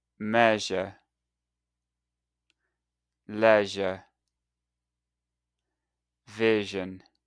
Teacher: your tongue needs to be near the roof of your mouth but make that extra buzzing sound.